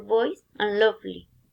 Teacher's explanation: with this word v it sounds for example voice and lovely the articulators involved the lower lip touch the upper teeth · The articulators involved, the lower lip touch the upper teeth. The articulation place is labiodental and fricative.